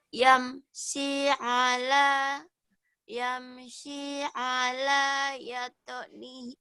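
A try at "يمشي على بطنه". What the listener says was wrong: Ini titiknya satu, batnihi. Bukan ya, tapi ba. Harusnya kan kalau salah dua-duanya ya. Kenapa ibu di sini tahu iya? Tiba-tiba titiknya satu dibaca ya juga.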